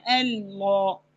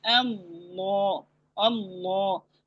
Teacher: دونوں لام موٹے کرنے ہیں۔ پھر الف کی، پھر ہم نے الف آ رہا ہے آگے تو وہ الف بھی موٹا ہوگا، اس طرح سے اللہ۔